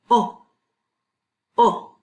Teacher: just an o like an orange would be o o no w sound afterwards